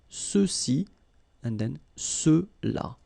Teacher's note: And then for the masculine plural, ceux-ci. Okay, remember final X is not pronounced, so you get the sound ce